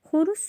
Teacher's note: Xoruz sözündə o u dodaqlanan saitdir və qalın saitdir.